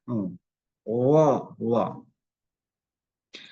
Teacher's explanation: tengah-tengah lidah kita ini diangkat ke atas sehingga dia berbunyi agak tebal. Berbunyi agak tebal dalam pengucapannya.